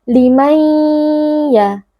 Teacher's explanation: Idgham bi gunnah, karena ada nun sukun bertemu dengan ya, dibaca dengan memasukkan dan meleburkan bunyi nun ke dalam huruf ya, disertai dengan dengung yang dipanjangkan.